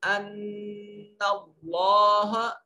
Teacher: انا نون مشدد ہے اور نواجب ہوگا. اس میں جلالت کا ما قبل مفتوح ہے, اس کو موٹا کر کے پڑھیں گے